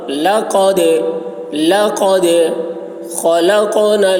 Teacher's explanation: خا کی آواز موٹی ہوگی، حلق سے ادا کریں گے